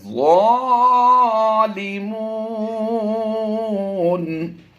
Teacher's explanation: الا الظالمون، حروف مدہ کے بعد حروف مدہ کو ایک الف کھینچا جاتا ہے، جبکہ یہاں پر سکون عارضی ہے تو اسے کم سے کم 2 الف کھینچیں گے اور زیادہ سے زیادہ 3 سے 4 الف. تو یہاں پر ہم نے مد عارض کرتے ہوئے زیادہ لمبا کرنا ہے.